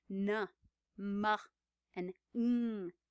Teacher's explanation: at the mouth but go through the nasal passage so no you can almost feel the airflow going up toward the nose